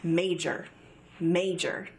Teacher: major has two syllables major with the emphasis on the first syllable